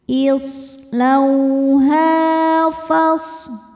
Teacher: Cara bacanya dipanjangkan haknya 2 harokat. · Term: mad tabi'i dhahiri